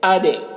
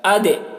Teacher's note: دال میں قلقلہ کریں گے، دال کی آواز ڈبل نکلے گی